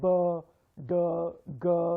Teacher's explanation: sounds like b, d, g, these are voice sounds. You will feel vibrations in your throat.